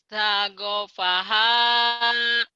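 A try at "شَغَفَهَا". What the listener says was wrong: Shinnya lupa tuh. Shin. Ya ada titik. Kalau nggak ada titik, ain bener. Ini ada titik jadi go. Syagofaha.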